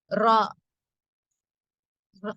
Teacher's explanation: நுனிநாவின் மேல் பகுதி மேல் முரசை, அதாவது மேல் ஈரை தொட்டி விலகும் போது உண்டாகிறது இந்த ரா